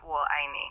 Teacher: The 我 sounds like whoa in English with a slightly rising tone, and I is a sharp falling tone, and me is a rising tone.